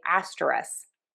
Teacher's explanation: I have to say, most of the time, I drop the K at the end of this word and say asterisk.